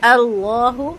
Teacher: لام لفظ جلالہ 2 حرکت لمبا ہوگا اور پر ہوگا